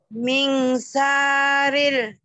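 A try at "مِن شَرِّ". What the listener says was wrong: Min syarril. Syarril. Bukan. Ming R-nya 2. Kayak ditahan sebentar.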